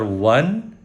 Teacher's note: اچھا، دو زبر کو نون تنوین بھی بولتے ہیں، کیوں بولتے ہیں یہ دیکھیں، واو زبر نون ون، ٹھیک ہے، واو زبر نون ون ہوتا ہے، اور واو کے اوپر دو زبر لگا دیں تو وہ بھی ون ہوتا ہے، واو دو زبر ون، واو زبر نون ون۔ اس کو نون تنوین اس لیے بولتے ہیں، نون کی آواز آتی ہے دو زبر میں سے